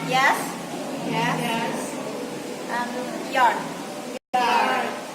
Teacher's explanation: Y sound, the place of y sound is in palatal.